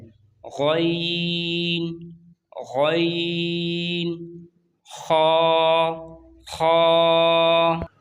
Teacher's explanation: حلق کے آخری حصے جو منہ کی طرف ہے وہاں سے بھی 2 حروف ادا ہوتے ہیں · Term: حروف حلقی